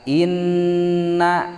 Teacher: henteu langsung innal tapi tahan heula innal ta sabab kedah aya sora anu bijil tina liang irung bari panjangna 2 harkat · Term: gunnah